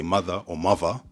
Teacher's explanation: replace the TH for a V